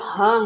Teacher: जो ह है वो हमारा संघर्षी व्यंजन है